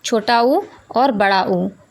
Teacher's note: इनको बोलने के लिए इनका उच्चारण स्थान ओष्ठ होता है